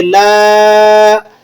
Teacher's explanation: next آیت دیکھ لیں، لا اعبد، لام کے بعد الف لگا ہوا ہے اور الف پر مد ہے تو آپ اسے 3 سے 4 الف لمبا کر لیں گے